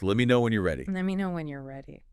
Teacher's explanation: Let me shortens to let and you are contracts naturally to your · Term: connected speech